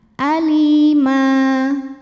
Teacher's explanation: Ma hukumnya adalah mad iwad sebab ada baris tanwin fathah yang diberhentikan atau diwaqafkan. Cara bacanya dipanjangkan, mimnya ini 2 harokat, bunyi n-nya dihilangkan.